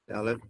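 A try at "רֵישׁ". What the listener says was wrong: So this one is Resh. So Dalit's right here. See, Resh looks like Apple iPod earphones. There's no dent. It's straight. But Dalit looks like someone put a dent in your Apple iPod earphones. So if it's got the dent, it's a D.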